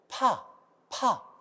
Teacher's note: 거센 소리라고 합니다 자 그래서 경음은 바람이 많이 나와요 여러분 이렇게 손바닥을 대고 파 파 하면 손바닥에 바람을 많이 느낄 수가 있습니다